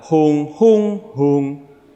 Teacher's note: not only rely on tone contour but also on tone Heights we have three different heights three different flat tones we have home home home so it's like kind of singing